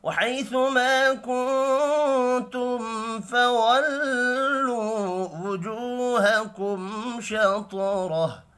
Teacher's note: نون ساکن کے بعد تا ہے، اخفاء حقیقی ہوگا